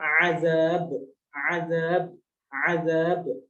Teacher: sifat yang spesial dari huruf ba adalah qalqalah, jadi mantul.